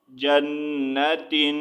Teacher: نون مشدد ہے اور نون مشدد پر ہمیشہ غنہ کیا جائے گا